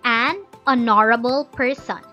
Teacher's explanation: The word honorable begins with the vowel sound O because the H is silent